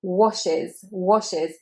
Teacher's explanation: that E is not said as any kind of E sound, it's said as I